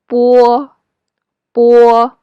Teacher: It looks like B in English IPA. In English, it's a voiced consonant, but in Chinese, it's a voiceless consonant.